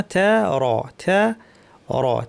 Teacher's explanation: থ্যা পাতলা, র ভারী।